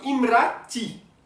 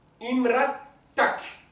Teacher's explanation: Ta femme, imratak. Voilà, quand il se raccorde au mot suivant, le A devient T. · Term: tamarbuta